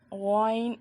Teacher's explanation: غائن اور خا کا مخرج سیم ہے. غائن اور خا میں فرق یہ ہے کہ غائن میں کھردری آواز نہیں آتی, خا میں کھردری آواز آتی ہے.